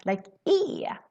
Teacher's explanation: When we speak really fast, the word är, which means is or are, kind of becomes more an e sound